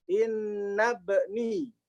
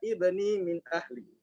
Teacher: hamzah wasolnya hilang. Tapi kalau dia mulainya dari ibni, dia ada. Dibaca ibni min ahli.